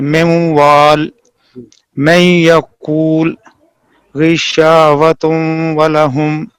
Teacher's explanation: نون ساکن اور نون تنوین کا ادغام واو اور یا میں ناقص ہوگا